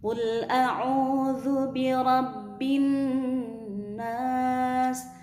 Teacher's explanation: Nah ini ada waw mati di sini, berarti dia o-nya itu panjang. Sebelum waw mati berharokat dhammah itu adalah mad, atau mad di sini adalah mad tabi'i atau mad asli.